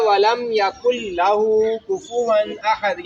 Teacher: یکن لاہو نہیں پڑھتے، یکل، کاف کو لام سے ملانا ہے، نون نہیں پڑھا جائے گا. کاف کو نون نہیں پڑھا جائے گا، پڑھا جائے گا ولم یکل لہو کفوا احد.